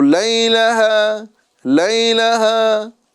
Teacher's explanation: ایک الف کے برابر کھینچ کے ہا کو ادا کریں گے